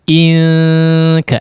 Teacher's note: Memang ang bunyinya untuk kaf dan qaf, tapi untuk qaf agak tebal ya, memang ditebalkan. Kalau untuk huruf kaf maka ikhfanya ditipiskan ya.